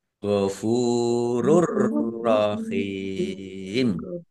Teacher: Bacaan idgham bila ghunah masuk dengan tidak mendengung langsung masuk ke huruf ro. Oh tanwinnya tidak dibaca langsung masuk ke huruf ro ditandai rnya dan tasdidnya tetapi tidak mendengung.